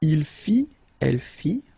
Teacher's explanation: Il fit, elle fit, final T not pronounced.